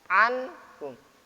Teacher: Nun mati berjumpa dengan ha dibaca idhar.